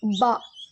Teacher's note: பா வந்து இரு உதடுகள் காய்ந்த பகுதியில் சேர்வதால் உருவாகிறது